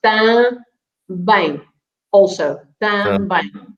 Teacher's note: So the M at the end is never pronounced as an N or an M, but is just to make the nasal sound of the vowel. So it makes it ang or ing, or you know, just like if you say one, you say you don't pronounce the M.